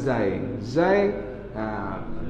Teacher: lidah di dalam jangan tubik kalau tu lidah tubik jadi zal